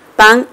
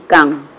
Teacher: Muy bien, pero la función distintiva radica entre la P y la K. La P es bilabial, en cambio la K es velar.